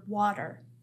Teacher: You might have been tricked by the letter T in the word water. Some people pronounce T's in the middle of a word more like a D sound. It's not usually as strong as the D that we hear, D, but it doesn't sound exactly like a T that we might pronounce at the beginning of a word, for example.